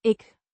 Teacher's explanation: pronounced ik, rhyming with sick, but with a shorter I sound